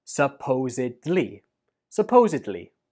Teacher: The stress goes on the second syllable, supposedly, and at the end, we do not pronounce it like bli. Instead, it is dli.